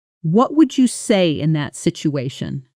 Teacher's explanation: Notice how my voice falls slightly on situation rather than rising. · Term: falling intonation